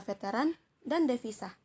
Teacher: Lalu ada V. V ini termasuk dalam bunyi labiodental, bunyi geseran, dan bersuara